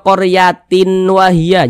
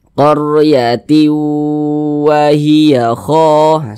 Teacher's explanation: jadi suaranya itu kita tahan kita panjangkan sepanjang dua harakat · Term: idgham bhunah